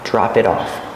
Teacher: the T in it is a fast d